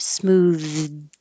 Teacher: Your tongue goes out for the TH, smoothed, and then up for the D.